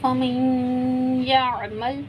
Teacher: نون ساکن کے بعد یا مشدد آ گیا تو یہاں پہ بھی ادغام مع الغنہ ہے، ہم نے یہاں پہ بھی غنہ کر کے پڑھنا ہے۔